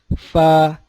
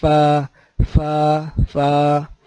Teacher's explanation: نیچے کے ہونٹ اور اگلے 2 دانت ثنایا کا کنارہ، فا، نیچے کے 2 ہونٹ، اگلے 2 دانتوں کا کنارہ، فا۔